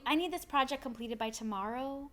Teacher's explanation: that questiony sound of tomorrow is an upward inflection